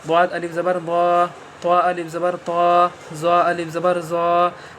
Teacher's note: تو اس میں آپ نے دیکھا کہ سب میں بڑے آ کی آواز آ رہی ہے